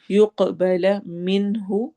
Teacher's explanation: یق قاف پہ قلقلہ ہوگا